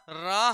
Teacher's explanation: वे व्यंजन जिनके उच्चारण में सांस जीभ से टकराकर थोड़ी लुढ़कती हुई सी प्रतीत लगती है · वे व्यंजन जिनके उच्चारण में सांस जीभ से टकराकर, सांस जो है जीभ से टकराकर लुढ़कती हुई सी लगती है, सांस जीभ से टकराकर लुढ़कती हुई सी लगती है, तो उन्हें हम क्या कहते हैं, लुंठित वर्ण कहते हैं।